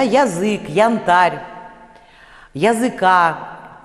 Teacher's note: такой звук близкий к «а», а он ненормативный здесь. Здесь надо произносить не близкий к «а» звук, то есть не крышечку, да, а «и» с призвуком «э», язык, да, янтарь и так далее.